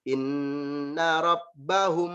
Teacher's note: Yang mim ketemu dengan ba itu dibaca panjang, ditahan. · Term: ikhfa syafawi